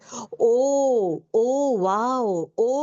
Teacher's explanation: उसी तरह अगर मैं इसको हो ये करना है, ओ, ओ वाओ, ओ कर रही हूँ मैं इसको क्या कर रही हूँ, मैं, मेरा टंग को जो है मतलब डिप कर रही हूँ मैं, देन उसके बाद जो है मेरा टंग का बैक साइड को ओपन कर रही हूँ मैं, एंड देन मेरा मुंह जो है मतलब गोल बना रही हूँ